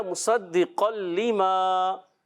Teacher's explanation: اسی طرح مصدقا لما، قاف تنوین کے بعد لام آیا تو بھی ناک میں آواز نہیں گئی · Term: ادغام بلا غنہ